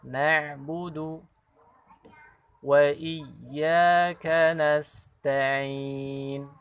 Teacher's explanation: Perlu latihan juga memang huruf ain, pengucapannya keluar huruf ainnya, makhrajnya dari tenggorokan bagian tengah.